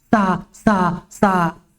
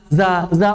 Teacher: kalau sin pita suaranya dilepas, blong, los. Adapun zai pita suaranya bergetar. Ya walaupun getaran pita suara nggak gitu-gitu banget.